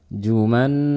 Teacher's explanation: Nun bertasydid dibaca dengan khunnah yang panjang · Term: gunnah yang panjang